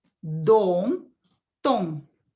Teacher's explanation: We pronounce these two letters, D and T. The tongue is in the same place. D, T. When your teeth behind are starting, you should touch your alveolus.